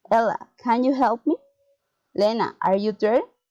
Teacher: Direct address, rising intonation.